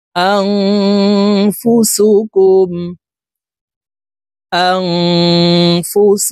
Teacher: এই নুন সাকিনকে নাকের ভিতরে লুকাইয়া গুন্নার সহিত পড়তে হবে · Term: ইকফা গুন্না